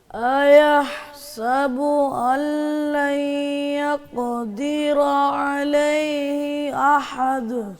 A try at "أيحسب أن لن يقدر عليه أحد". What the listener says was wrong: عین صحیح نہیں نکالی.